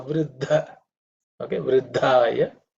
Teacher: the second dha is an aspirated one because it's the fourth letter in the tha varga